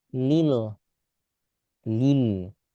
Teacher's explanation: Meski enggak sampai seperti lam tebal pada lafzul jalalah tapi ini bukan lam tipis. Ini L Indonesia.